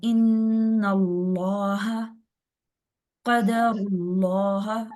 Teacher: क्यों, जब लाम इसमें जलाला से पहले जबर होगा, ये जबर है, ठीक है। लाम से पहले जब जबर आ जाएगा तो फिर ये लाम मोटा हो जाएगा